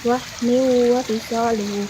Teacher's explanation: Dalam kata wahni wa fisalihu terdapat hukum bacaan idgham bigunah karena kasrah tanwin bertemu dengan waw dibaca dimasukkan dengan dengung